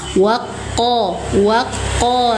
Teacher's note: huruf yang bertasydid itu dinamakan nabr. Cara bacanya tekan dan naikkan suara